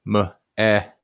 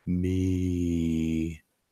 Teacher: Remember, this is a closed syllable. If it was just me, it would be an open syllable and it would be not eh, but e. Me. That would be an open syllable, but it's not, has a T at the end.